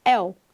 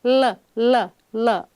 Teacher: Esse L, el, não obstrui a passagem de ar, diferente de L, L, L, outra articulação da consoante L. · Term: semivogal